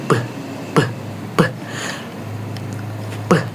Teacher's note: sama seperti P ya huruf P tetapi dengan getaran pita suara. Getar ya.